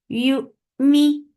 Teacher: You for Dhamma circle your lips, start with Hamza. Hamza will give it a stop, very sharp stop, and as you will touch Hamza, your lips should be in a straight position.